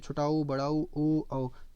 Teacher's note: जब ओठों की आकृति आपके गोल हो रही है तो वृत्त मुखी। और जब अन्य आकार में गोल ना खुल के अन्य आकार में खुल रही है तो आपकी अवृत्तमुखी हो जाएगी।